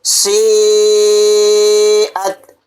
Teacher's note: اور مد متصل کو 4 الف کی مقدار ہم وائس کو لونگ کریں گے یعنی کہ آواز کو کھینچیں گے۔